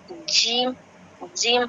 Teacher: جیم ہمارے زبان کے بیچ اوپر کے تالو سے ملا کے بولے جاتے ہیں